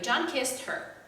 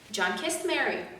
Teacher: when i say her i cannot emphasize her i emphasize kissed